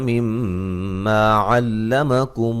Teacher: میم مشدد پہ غنہ ضروری ہے